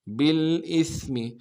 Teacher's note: با کو لام کے ساتھ ملانا ہے، لام میں غنہ نہیں ہوگا